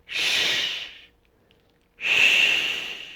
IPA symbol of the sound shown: ʃ